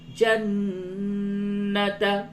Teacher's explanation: نون مشدد ہے، اس جگہ پہ غنہ ہوگا